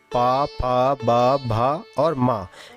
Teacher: पवर्ग में पा, फा, बा, भा और मा इन वर्णों का उच्चारण स्थान होता है ओष्ठ। ओष्ठ मतलब ओंठ।